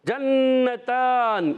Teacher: جنتان، یہاں پر جیم کی ادائیگی، جیم ادا ہوتا ہے وسط زبان وسط تالو سے، اور جیم پر زبر ہے، نون پر زبر ہے.